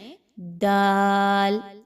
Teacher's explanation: ता की तरह जुबान की नोक को पीछे मसूड़ों के साथ मिलाएं। दाल तो वहां से दाल की अदायगी की जाएगी। · اب جو دال ہے اس میں سیٹی کی آواز کو بالکل بھی نہیں لانا